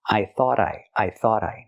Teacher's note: We hear the T in thought at the end pronounced as a fast D because it's between vowels phonetically.